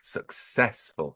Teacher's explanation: clearly the stress is on the second syllable there